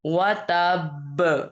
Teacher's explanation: حرکت ختم ہوگی لیکن کلکلا پورا کریں گے اور تشدید بھی مضبوطی جماؤ کے ساتھ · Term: کلکلا اکبر